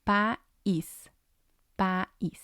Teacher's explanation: But because it has the accent, I moves to its own syllable. So it's going to have 2, and the stress is going to be on the I.